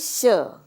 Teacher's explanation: इस श के उच्चारण में मेरे पास मूर्धा का प्रयोग हो रहा है। तो इसका उच्चारण स्थान मूर्धा से हो रहा है।